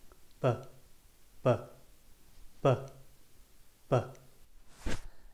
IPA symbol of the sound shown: b